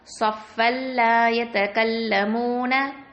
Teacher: இதுகாம்பி கைரி குன்னா. குன்னா செய்ய மாட்டோம். ஓகேவா? இணைச்சு ஓதிடுவோம்